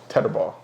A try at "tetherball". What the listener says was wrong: No. You're adding D's where there is no D. You're saying tether.